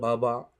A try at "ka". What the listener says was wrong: No, that's not a ba. No. a ka. Ka.